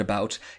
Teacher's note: the T sound becomes this really long lingering sound